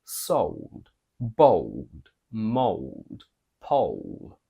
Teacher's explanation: when we have the combination o plus a dark L even in British we go American because otherwise this combination would be extremely demanding on our mouth